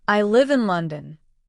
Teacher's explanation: my voice falls at the end. · The pitch naturally falls at the end on the word London. That's what makes it sound complete.